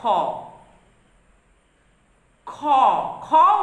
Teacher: তার মানে কি, কটা হচ্ছে অল্প প্রাণ ব্যঞ্জন, ক এর সঙ্গে হ যুক্ত হয়ে উচ্চারিত হয় খ। খ খ উচ্চারণ করলেই তোমরা বুঝতে পারবে খ এর মধ্যে ক যুক্ত হ বসে আছে। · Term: মহাপ্রাণ ব্যঞ্জন